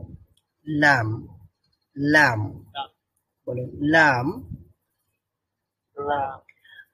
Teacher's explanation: আগা ব্যবহার করতে হয় অর্থাৎ জিহ্বার অগ্রভাগ ব্যবহার করতে হয় এবং লাম বলার সময় ওই দাঁতের গোড়াও ব্যবহার করতে হয় দাঁতের গোড়ার মধ্যে ওই জিহ্বার অগ্রভাগটা যুক্ত করতে হয় লাগাতে হয় লাম উচ্চারিত করতে হয় তাহলে আমরা বলতে পারি লামের